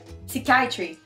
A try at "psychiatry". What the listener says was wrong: Non, il n'y a pas de P, c'est muet de P.